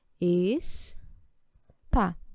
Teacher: Tem duas. Qual delas é a mais forte? A última. Então, eu tenho uma oxítona.